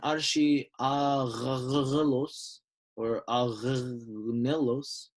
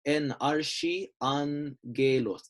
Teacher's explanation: The letter after the first Ghamma is another Ghamma. Therefore, this first one changes to an N.